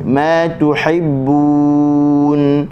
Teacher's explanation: tu muncung, ha bagi bawah, hi kita senyum, bun kita muncung balik